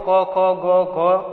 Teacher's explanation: તો કંઠ્ય વર્ણ એટલે કે જેનું ઉચ્ચારણ જીભ છે, જે વર્ણોનું ઉચ્ચારણ કરતી વખતે જીભનું જે મૂળ કોમળ ભાગ છે એ તાળવાને સ્પર્શ કરીને કંઠમાંથી ધ્વનિ ઉત્પન્ન થાય છે તેવા વર્ણોને કંઠ્ય વર્ણો તરીકે ઓળખવામાં આવે છે.